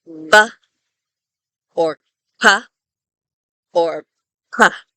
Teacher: And what that means is that we completely obstruct the airflow from our lungs, and then we let it out all at once. · there's like a little stop, there's no sound at all, and then boom, all of a sudden there's like a little explosion of sound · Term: a stop or a plosive, plosive